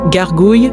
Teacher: Beaucoup de personnes ont du mal avec ce son guttural qui se prononce au fond de la gorge. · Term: le fameux R français